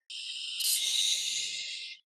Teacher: we can say this is a windy sound because the air comes out for a long time